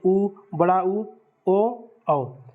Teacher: तो आपको क्या आएगा, ये हमारा ओठ है वो गोल हो जाएंगे, जिसकी वजह से वृत्ताकार बोलते हैं।